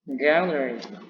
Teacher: Cara bacanya yakni gallery. Nah, jadi ditekan di awal ya setelah simbol primary stressing